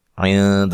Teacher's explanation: عند میں نون ساکن کا اخفا مع الغنہ ہے، باریک اخفا کرنا ہے